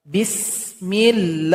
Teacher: lafaz Allah ini dipanjangkan 2 harokat saja. Tidak boleh lebih.